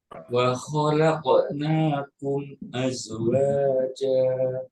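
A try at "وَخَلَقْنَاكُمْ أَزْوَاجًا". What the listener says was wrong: Masya Allah. Tabarakallah.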